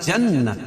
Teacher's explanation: نون مشدد اس میں غنہ ہوگا